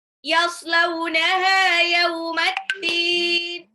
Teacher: Sod itu lebih mirip ke sin biasa ya, Bun, bukan shin, bukan yash, tapi yas.